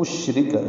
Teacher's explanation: ان دونوں میں اظہار ہے، نون ساکن کے بعد حمزہ ہے، اشرک شین ساکن ہے، اس پہ تفشی ہے